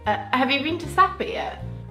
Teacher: English people tend to have a quick rise and then a little fall